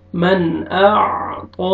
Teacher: نون ساکن کے بعد حروف حلقی میں سے حمزہ ہے، آپ نے اظہار کرنا ہے، جلدی پڑھیں گے